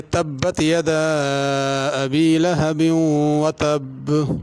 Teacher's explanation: اور جب وقف کریں گے یہاں پر رکیں گے تب بھی ایسے پڑھنا ہے کہ 2 با محسوس ہو۔ تب اگر پڑھیں یا تب تو اس میں 1 با محسوس ہوگی، یہ غلط ہے۔